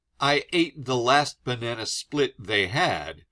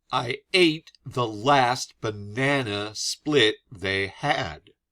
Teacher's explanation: you might notice that I say alternating parts of this more intensely. I stress every other syllable.